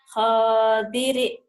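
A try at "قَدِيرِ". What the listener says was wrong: Kodiri, bukan ho tapi kok. Kodiri.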